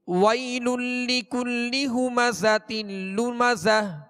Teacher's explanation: زا کو سختی کے ساتھ سیٹی کی آواز میں ادا کریں گے